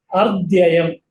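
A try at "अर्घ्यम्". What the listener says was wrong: Ar. Not dhya. What is this? No, that is gha. Ka, kha, ga, kha. Samyak. Argyam. Half gha. So argyam is correct.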